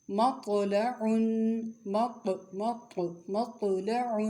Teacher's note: طا کی آواز موٹی اور جھٹکے والی ہوتی ہے